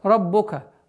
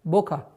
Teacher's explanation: ра твердый, но при произношении огласовки дамма нужно быть максимально внимательным, чтобы не переходило в звук о.